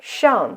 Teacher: So here, 上, we use the fourth tone, which have this motion, a sharp falling tone, like when you give a command.